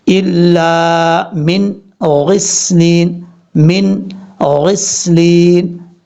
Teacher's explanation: نون پہ آواز رک جائے پھر آگے چلیں.